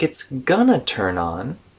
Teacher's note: going to connects into Gunna